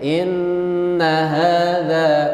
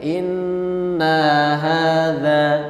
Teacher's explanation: Nunnya didengungkan tapi setelah itu pendek. Inna hadza, tidak boleh inna hadza.